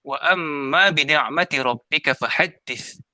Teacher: mim itu mempunyai sabdu, dibaca dengan dengung 2 harakat